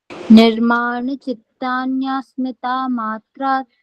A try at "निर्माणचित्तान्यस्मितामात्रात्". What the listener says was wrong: स्मृति कहाँ है इसमें? फिर से बोलिए विजय जी ध्यान से, स्मृति नहीं है इसमें।